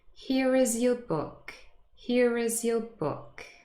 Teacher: I hope you were able to hear it again, the linking r appearing between here and is